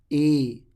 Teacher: یہ ای ہے، حلق کے نیچے سے نکلتا ہے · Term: حمزہ کھڑی زیر